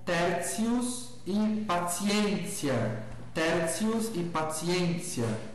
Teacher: O grupo TI na pronúncia eclesiástica vai soar como tsi